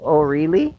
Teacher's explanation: So notice the rising intonation on really. This shows that the speaker is surprised.